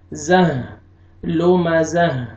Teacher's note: تا کو آپ نے ہا میں چینج کرنا ہے وقف کی صورت میں، اور لاسٹ میں ہا کا ساؤنڈ آئے گا